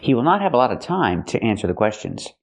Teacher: The word is not stressed. We pronounce it in a relaxed way. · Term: t sound